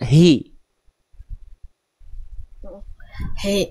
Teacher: Hak besarnya harus dijelaskan dari pangkal tenggorokan.